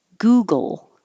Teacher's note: your tongue is just going from the g to the l very quickly and hold the l